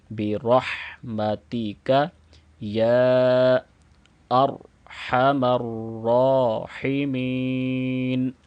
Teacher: چونکہ یہاں پہ ہم نے وقف کرنا ہے تو نون کو بھی ساکن پڑھیں گے